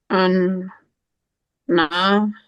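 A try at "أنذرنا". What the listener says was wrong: It's not Noon, it's Zal. It's Zal.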